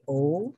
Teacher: this sound is produced when the tongue moves backward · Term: the sound of o